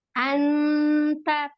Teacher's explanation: karena ta ini huruf tipis, maka bunyi nunnya ya atau tanwinnya itu menjadi tipis, gitu ya, dan mendekati n